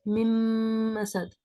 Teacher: پھر ہے مم مسد. مم مسد میں من مسد لکھا ہے لیکن پڑھتے ہیں مم مسد